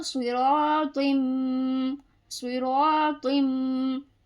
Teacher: تو کا مخرج ہے زبان کی نوک اور سامنے کے دو دانت کی جڑ، ٹھیک ہے. تو یہ باریک تا نہیں پڑھیں گے، یعنی لمبی جو تا ہوتی ہے نا دو نقطے والی، یہ نہیں پڑھیں گے ورنہ غلط ہو جائے گا، ٹھیک ہے.